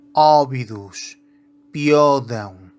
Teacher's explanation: quando a letra O faz parte de uma sílaba tônica a pronúncia é aberta